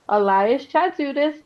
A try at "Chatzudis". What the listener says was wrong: It's actually Hadjudis, the C is silent, but I guess it's fine.